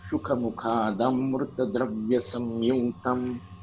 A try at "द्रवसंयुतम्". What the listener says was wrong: Not dravya नहीं है, द्रव संयुतम. शुकमुखादम्रद्रवसंयुतम् शुकमुखादम्रद्रवसंयुतम्.